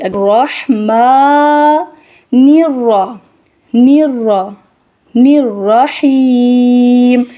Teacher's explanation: میم کو ادا کرتے ہوئے ناک کے اندر آواز نہیں جائے گی۔ الرحیم، حیم ادا کرتے ہوئے بھی ناک کے اندر آواز نہیں جائے گی